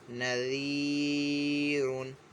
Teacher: سے پہلے جو ہے زیر آ رہی ہے، اور یہاں پہ یا مدہ کا قاعدہ ہو رہا ہے، تو اس کو جو ہے کھینچ کر پڑھیں گے ایک الف دو حرکات کے برابر